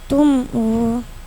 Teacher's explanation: izhar syafawi mim sukun bertemu hamzah jelas bacanya.